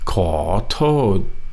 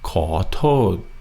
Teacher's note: Kind of ends in a T. Your tongue is kind of almost making a D.